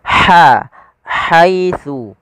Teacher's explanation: Kemudian pada lafal haitsu, ha haluskan, dan huruf ha ini memiliki sifat hamas. Makhrajnya dari tengah tenggorokan kita